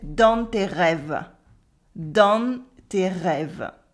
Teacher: he's subtly pronouncing the N in nasal vowels and the final silent U. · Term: Southern accent